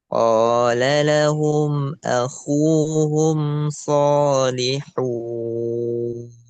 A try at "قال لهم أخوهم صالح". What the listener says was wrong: Nggak ada wau ya.